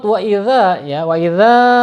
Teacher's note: wa idza, zalnya dibaca panjang. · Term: mad tabi'i